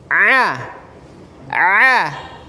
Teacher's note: tidak tutup hidung dan tutup hidung suaranya sama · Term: huruf Ain